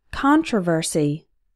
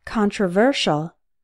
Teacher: in controversy the stressed syllable is Con but in controversial the stressed syllable is ver